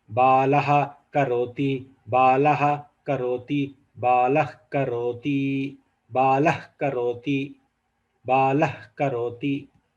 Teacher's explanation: So very simple, just the names are different, but the Sandhi Karya which is happening is Visarga getting the Adesha, the full Visarga getting transformed to half Visarga. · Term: Jihvamuliya